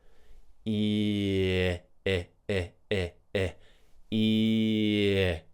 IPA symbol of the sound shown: ɪ